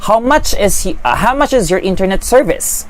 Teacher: Question, pataas yung tono din